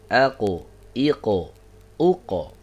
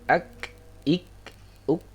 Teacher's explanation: kalau qaf itu dia di pangkal lidah bertemunya dengan langit-langit lunak, kemudian yang kaf itu dia bertemunya dengan langit-langit keras